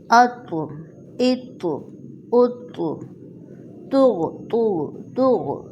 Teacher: اب یہاں پہ یہ خیال رکھنا ہے کہ یہ موٹی تو جب ساکن ہوتی ہے تو اس کی آواز پلٹ کر آتی ہے